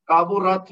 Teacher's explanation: اچھا، کابورت میں را کے اوپر زبر ہے تو یہ موٹی پڑی جائے گی، اور تا ساکن ہے تو یہ ہوگا تا کا ہمس ہوگا